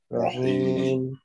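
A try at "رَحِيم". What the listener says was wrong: এটা হাটা গলার ভিতরে উচ্চারণ হবে, রহিম। আমরা যে আগে রহিম পড়তাম ওইটা পড়া যাবে না। রহিম তো ওই হাটা হচ্ছে গোল হা, এটা লম্বা হা, এটা রহিম পড়তে হবে, রহিম ভিতর থেকে।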